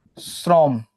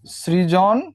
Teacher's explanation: যে কোনো স থাকলে তুমি এই বানান উচ্চারণের ক্ষেত্রে কি করবা, সেটাকে তালব্যস্য করবা।